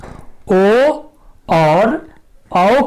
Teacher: ओदौतुः कंठोष्ठम, अर्थात ओ और औ का उच्चारण स्थान है कंठोष्ठ, इन्हें हम कंठोष्ठ वर्ण भी कहते हैं। ये दोनों ओ और औ कंठ और ओठ दोनों के मिलने से उच्चारित होते हैं।